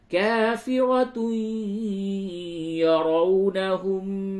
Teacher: واو لین ہے، واو ساکن سے قبل زبر ہے، یہ واو لین ہے، نرمی کے ساتھ بولے